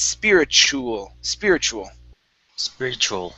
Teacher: have a t u and they're paired together like this okay in most cases you are going to pronounce that t like a ch